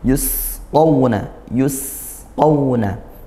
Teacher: sin sukun dibaca ngalir ya suara dan nafasnya dialirkan. Yusquna thya tebalkan dan juga dia lin fathah diikuti wau sukun.